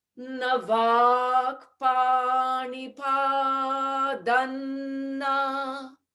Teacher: Now when we add na, the padam can change to padan so that the tongue has less work to do. There can be a sandhi there.